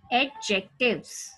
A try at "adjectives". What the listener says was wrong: Adjectives नहीं, D पे stress नहीं देना, D पे ज्यादा जोर नहीं लगाना.